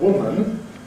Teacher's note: Whereas a preceding nasal, for example, very strongly disfavours it. So the word “woman” [ ˈwʊmən ] is not usually pronounced [ˈwʊmn̩ ]